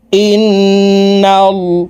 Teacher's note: এই হামজা তাশদি নুনের সাথে নাকের বাঁশি থেকে গুন্নাহ করে ধরে রাখবো অর্থাৎ গুন্নাহ করে পড়বো এই গুন্নাহকে ওয়াজিব গুন্নাহ বলা হয় গুন্নাহ